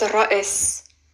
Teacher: But anyways, it's pronounced Ra'is. Ra, it's a rolling R, Ra. And then there's a very short like Amelia, Ra. And then there's a glottal stop. And then there's a S.